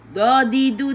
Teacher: Tepi lidah menyentuh gigi geraham atas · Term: huruf dad